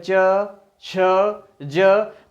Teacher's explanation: च, छ, ज के उच्चारण में तालु पर अधिक बल पड़ता है, इसलिए ये तालव्य वर्ण कहलाते हैं